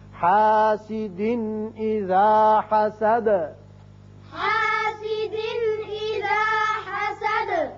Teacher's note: آیت ختم ہوتی ہے تو دال کی صفت قلقلہ حسد کر کے پڑھیں گے.